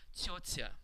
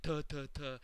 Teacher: That word means ant in Russian, and the T's are soft.